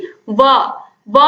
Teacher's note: जिस ध्वनि का उच्चारण दांतों और ओठों की दोनों की सहायता से किया जाता है उसे हम दंतोष्ठ ध्वनि कहते हैं।